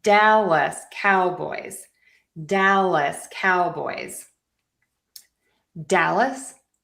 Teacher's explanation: So we have the stress on dal Dallas and then we have stress on cow boys. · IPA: /ˈdæləs ˈkaʊbɔɪz/